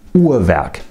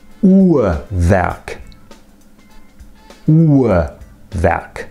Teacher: This is a near-open central vowel, which means that it's pronounced by pulling the tongue down a bit, but not pulling it back or pushing it forwards.